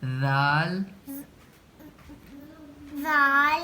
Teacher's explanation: زبان کی ہلکی سی نوک باہر نکلے گی